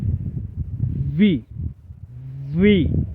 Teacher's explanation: పళ్ళు దంతాలు ముందుకొచ్చి పెదాన్ని కొంచెం నొక్కి పట్టాలి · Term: వి సౌండ్